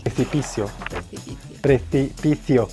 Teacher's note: Nosotros los latinoamericanos pronunciamos la C y la Z igual que como la S.